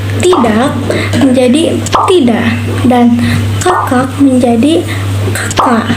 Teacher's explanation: pada fonem ini dibacanya dihilangkan K-nya dan memberikan jeda